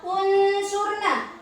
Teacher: Nun mati bertemu shad, jadi harus dibaca samar, yaitu termasuk bacaan ikhfa.